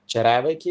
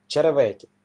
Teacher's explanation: наголос української мови є на другий від кінця склад, а в моїм селі на третій від кінця